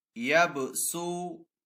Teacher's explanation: ادھر با ساکن ہے، با حروف کلکلہ میں سے ہے، تو با کے اوپر کلکلہ بھی کریں گے، اور یہاں پہ سین کو ہم پڑھیں گے، صاد کو نہیں بلکہ سین کو پڑھیں گے، اور سین میں سیٹی کی آواز بھی آئے گی